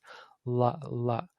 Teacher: You'll see if you say ra, you're curling your mouth back a little bit to create that ra, ra, ra, ra. With the la, you're not allowing the air to go through the middle of the mouth. You're letting it go through the sides. That's how we get the la sound. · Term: the lateral